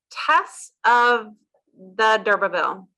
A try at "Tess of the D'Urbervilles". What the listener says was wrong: There's a book called Tess of the D'Urbervilles. You do pronounce the S on the end, Tess of the D'Urbervilles.